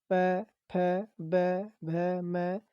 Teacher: यह प वर्ग जो है यह ओष्ठ व्यंजन आपका होता है